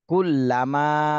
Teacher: মাতে তিন আলিফ টান দিতে হবে